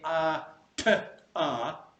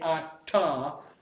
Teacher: there's a silent bit before the t, and then there's a burst of air. So it's not a continuous thing that you're saying. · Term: stops